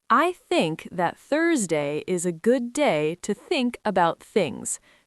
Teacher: Tongue between teeth, no voice, just breath. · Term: soft th